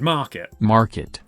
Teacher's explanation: I as someone with a very non- rotic accent don't really say that letter r in the word at all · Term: non-rhotic